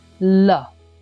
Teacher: the first one is called lateral liquid the latter liquid is produced with the tongue touching the alveolar Ridge